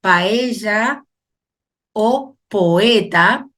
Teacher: esas vocales se separan porque hay dos vocales abiertas sí no van a permanecer juntas en la misma sílaba por